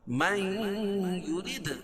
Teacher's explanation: من یرید دال پر قلقلہ اور را کو باریک پڑھیں گے